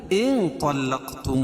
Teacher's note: اور نون ساکن کے بعد حروف اخفا کے 15 حرفوں میں سے طا ہے تو یہاں ناک میں آواز کو چھپا کر پڑھیں گے۔